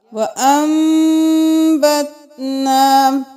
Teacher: پھر دیر لگائی کیونکہ میم کے بعد با آ گیا